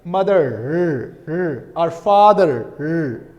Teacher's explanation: Rhoticity is present. The pronunciation of r is present